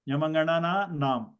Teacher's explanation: when you pronounce the anunasikas, the modulation point is nose and mouth